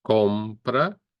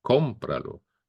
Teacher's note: So the stress tone goes in the same place, on the O after the C.